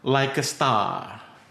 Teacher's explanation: kalau ada huruf R yang di akhir kalimat itu boleh hilang sebetulnya ya.